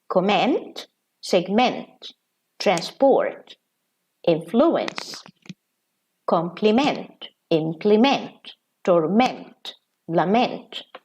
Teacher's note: when they are verbs, we pronounce them like this, with stress on the last syllable